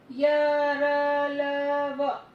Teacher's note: ऐसे व्यंजन जिनके उच्चारण में जीभ मुख के किसी भी भाग को पूरी तरह से स्पर्श नहीं करती है। जो आपकी जीभ है यहाँ पर, वो जीभ आपके किसी अंदर के हिस्से को प्रॉपरली स्पर्श नहीं करेगी। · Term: अंतस्थ व्यंजन